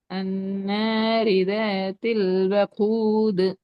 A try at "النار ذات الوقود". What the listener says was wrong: நீட்டி ராகம் எடுக்கணும்.